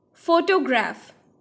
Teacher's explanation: in the word photograph there are three syllables and the first one is stressed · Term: word stress